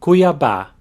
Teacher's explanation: The acute accent over the last A tells you that that's an open A sound, and also that that's where the strongest syllable is.